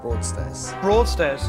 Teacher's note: So there's a plosive sound at the beginning.